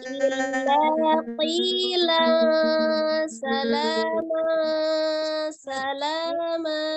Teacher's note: La-nya tidak terlalu panjang ya, tidak dibaca illa, tapi 2 harokat sama ya